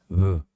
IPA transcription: β